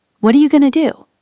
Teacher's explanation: what are you going to do? Often sounds like what you gonna do in very casual speech.